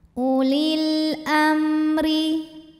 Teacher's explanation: Huruf ro dibunyikan secara tarqiq sebab barisnya di bawah, maka bacanya tipis.